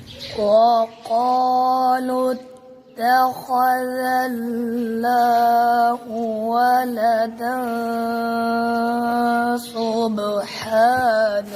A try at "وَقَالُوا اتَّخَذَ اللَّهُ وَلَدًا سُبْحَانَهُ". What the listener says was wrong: आपने अल्लाह लफ्ज़ अल्लाह कलाम मोटा नहीं पढ़ा।